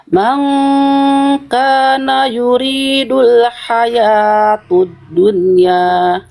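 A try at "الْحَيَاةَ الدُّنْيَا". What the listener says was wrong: Oke, hayatu atau hayata Bunda? Ya, salah harokat kalau baris fathah tegak, vakalnya A, kalau full atau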